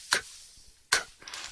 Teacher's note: Haces el sonido con aire en la garganta, pero sin cuerdas vocales.